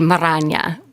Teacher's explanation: And so that would also be coming from a Spanish word, but we'd be having two R's in Marana. So it'd be Marana with a rolled R in the middle.